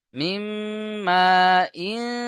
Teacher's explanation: মিম আলিফ জাবার মা। এখানে 2 থেকে 3 আলিফ টান হবে, কারণ হরুফে মাদ এসছে, মাদের পরে হামজা একই শব্দের মধ্যে এসছে, বা আসল রূপে এসছে মাদ্দে মুত্তাসিল।